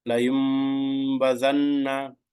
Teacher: The noon sound of tanween nun sakin must be changed to meme sound and read it. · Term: iqlab